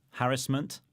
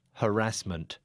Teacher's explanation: So I'm putting the stress on the first syllable. And I'm putting it on the second.